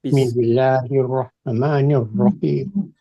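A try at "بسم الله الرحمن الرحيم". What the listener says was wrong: Jangan tergesa-gesa. Bismillah, lahnya ini harus dikasih 2 dan alnya ditekan. Jadi Bismillah 2 ini. Rahmanirrahim.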